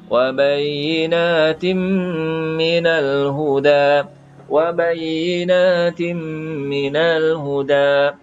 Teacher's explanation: Di sini wabayinatin, ini adalah idgham bi gunnah, ya. Tanwin tidak selari, kemudian ada mim, ya. Mim kita kena dengungkan.